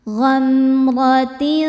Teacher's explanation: Kemudian ada hukum ikhfa hakiki ausat karena ada tanwin kasrah menghadapi huruf sin. Cara bacanya tanwin disamarkan ke sin disertai dengungan. Dengung dan kesamarannya sama besar.